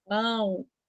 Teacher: o a e o o saem pelo nariz é um ditongo nasal